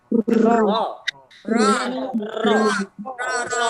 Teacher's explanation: Kalau mengucapkan huruf ro, cukup satu getaran saja ya. Bergetar. Pengucapan huruf ro, jangan sampai berkali-kali getarnya.